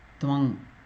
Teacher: it should go and stay in the nose, the anunasika